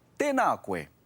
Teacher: Notice that there's a macron on the a and a of the word tēnā. Remember to make those vowels nice and long.